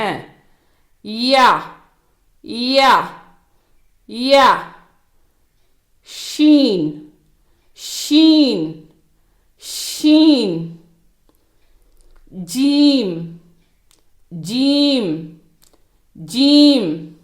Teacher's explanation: இவை நாவின் நடுப்பாகம் மற்றும் அதற்கு நேராக உள்ள வாயின் மேற்புறத்தில் இருந்து உச்சரிக்கப்படுகின்றன.